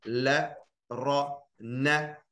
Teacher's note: De eerste 3, lam, ra, noon, komen uit het puntje van je tong.